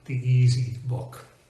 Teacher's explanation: you'll notice there's a very very slight pause between the two e's · there's a very, very slight pause between the two E's, the E in the end of the and the E at the beginning of easy